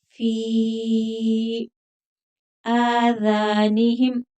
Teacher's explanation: فی مد منفصل کیونکہ حمزہ دوسرے کلمہ میں آگے ہے، 3 الف تک کھینچیں گے فا کو